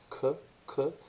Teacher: le que est un son produit dans l'arrière de la bouche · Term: velaire